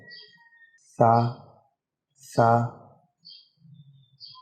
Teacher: سب سے نمبر 1 پر جو ہے وہ ہے سا۔ سا کو جو ہے نرمی سے ادا کرنا ہے، دونوں دانتوں کے بیچ میں زبان رکھ کے